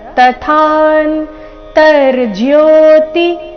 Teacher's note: ತದ ನಂತರ ಥ ಮಹಾಪ್ರಾಣ ದೀರ್ಘ ಮುಂದೆ ಅರ್ಧ ನಕಾರ